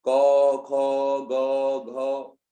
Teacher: ये आपके गले से निकलने वाली आवाज है, कंठ से निकलने वाली आवाज है। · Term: कंठीय व्यंजन